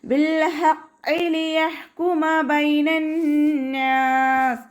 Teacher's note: ഹ തൊണ്ടയുടെ മധ്യഭാഗത്തു നിന്ന് തന്നെ സൗണ്ടിനെ കൊണ്ടുവരാൻ ശ്രദ്ധിക്കുക.